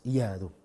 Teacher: Kita matikan iya, ada suara, ada suara terlepas. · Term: rakhawa